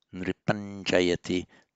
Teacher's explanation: and pronounced palatally, nripanjayati, to reflect the following consonant, j